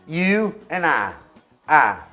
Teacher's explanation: em vez de ter o ditongo I, você fala só I